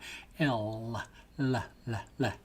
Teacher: you touch the tip of your tongue to what's called the rugae of your top palate, just behind the top front teeth. So you're not touching the teeth, you're touching the top of your palate just behind the teeth with the tip of your tongue.